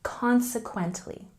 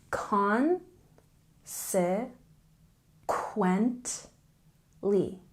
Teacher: a stress on the first syllable consequently